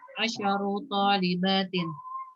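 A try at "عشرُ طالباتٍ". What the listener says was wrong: Ashru ya, shinnya dia sukun. Ashru. Ashru talibatin.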